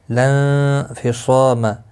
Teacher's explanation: نون ساکن کے بعد حروف اخفا کا فا آیا ہے، اخفا حقیقی ہوگا، گنہ کے ساتھ پڑھیں گے، صاد مستعلیہ ہے اور اس کے ساتھ الف بھی آیا ہے، یہ بھی پر پڑھا جائے گا، الف مدہ بھی بنتا ہے، ایک الف کے برابر کھینچ کر بھی پڑھیں گے، ہا بھی الف مدہ ہے، ایک الف کی مقدار کے برابر کھینچ کر پڑھیں گے۔